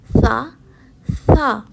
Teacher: حروف ثا بھی زبان سے ادا کیا جانے والا حروف ہے. زبان کی نوک جب سامنے والے دانتوں کی نوک سے ٹکراتی ہے تو ثا ادا ہوتا ہے.